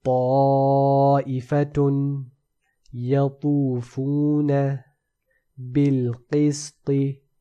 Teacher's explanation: the ta is a heavy letter, so the tongue is made into a concave. And not only that, this concaving causes the sound to be compressed within it and the roof of the mouth.